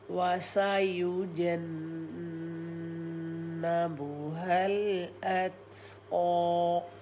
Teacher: اور قا کو دو حرکت کا ٹائم دیں گے اور ہم وقف کر لیں گے